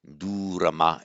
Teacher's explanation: So what happens, the R, the first R drops out, and that is compensated for by the vowel, the preceding vowel becoming long. So durama instead of durrama, which is not allowed.